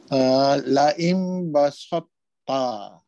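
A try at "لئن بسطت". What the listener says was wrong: Kalau boleh kurangkan sin itu, tipiskan sikit lagi. Dia dah nak tebal sikit dah. Basa. Bila kita nipiskan betul selamat dah sin itu tipis. Jadi nak dapatkan muncung tebal ta itu perlu kepada masa sikit. Sin di atas Sin di atas sa. Okey, kekalkan sin di atas sa.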